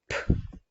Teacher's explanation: перший звук Ми чуємо звук п це твердий приголосний